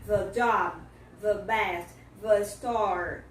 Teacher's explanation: Esse TH, ele não tem som de D. Você vai ter que fazer o som do TH vozeado.